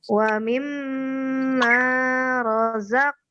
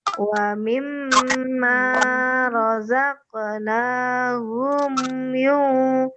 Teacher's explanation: Mim sidah atau nun sidah itu dibaca gunah. Gunah itu artinya dengung. Kalau dengung berarti harus kita tahan.